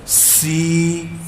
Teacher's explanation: یہ سین کی سیٹی باریک ہے